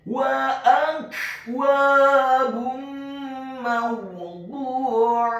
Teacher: huruf ainnya ditekankan keluar dari tenggorokan bagian tengah fathah 1 harokat. Dan di akhir ayat huruf ta marbutohnya diubah menjadi huruf ha yang tafkhim yang tebal dan dibaca sukun.